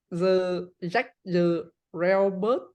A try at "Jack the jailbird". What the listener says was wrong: Mm, I think you have a problem with this sound. Ch, j. Jailbird. Jailbird. So J, J sound.